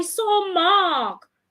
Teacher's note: my voice comes down